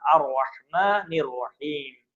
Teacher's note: دونوں رے کو موٹا موٹا پڑھا جائے گا